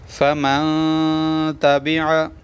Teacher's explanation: یہاں پر غنہ ہوگا کیونکہ تا حروف اخفا میں سے آئی ہوئی ہے. فمن تابع، آواز کو چھپا کر پڑھیں گے.